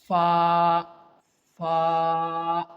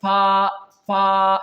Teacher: When the edge of your upper teeth touches the soft part of your lower lips, then the letter fa will pronounce correctly.